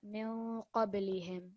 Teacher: you pause a little bit on the nun sakin and you also produce a nasal sound